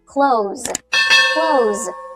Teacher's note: The S sound at the end of the word close should be a Z, a voiced sound. Z and not S, right?